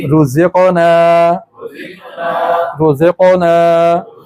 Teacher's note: क़ाफ हमारे गले से अदा होगी, जो गोश का लोथड़ा लटक रहा है ना कौवा, उसको हरकत देंगे तो इससे कलकला पैदा होगा।